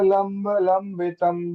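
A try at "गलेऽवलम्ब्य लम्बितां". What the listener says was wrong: लंबिताम, लंबिताम, लंबितम मत कीजिए। लंबिताम, गले लंब्य लंबिताम।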